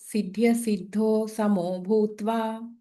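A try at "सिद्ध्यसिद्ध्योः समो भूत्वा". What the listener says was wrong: అక్కడ సిద్ధ్య సిద్ధ్యోహో, అక్కడ ఇంకొక యకారం ఉంది, అది ప్రింట్ మిస్టేక్ అనుకుంటా. సిద్ధ్య సిద్ధ్యోహో సమో భూత్వా సమత్వం యోగ ఉచ్యతే.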